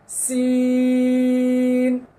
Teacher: শেষে জিহ্বার আগা তার বরাবর উপরের তালুর সঙ্গে লেগে যাবে কেননা শেষে নুন রয়েছে